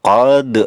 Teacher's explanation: dal berharokat sukun, ini termasuk qalqalah sugro karena ada di tengah kalimat